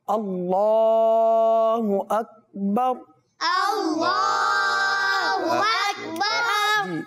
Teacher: यहाँ जो मिस होता है वो अल्लाह अज़्ज़ा व जल्ला का हा · इसमें अल्लाह अज़्ज़ा व जल्ला के नाम को पुर पढ़ेंगे, अकबर को दुरुस्त अदा करेंगे